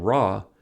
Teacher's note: For ra, the tongue tip is curled up toward the palatal area.